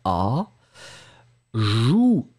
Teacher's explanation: c'est vraiment un OU-OU-OU qui est très très rond